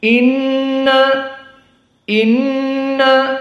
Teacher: Nun musyaddadah wujubul gunah maka harus dua harakat dari hidung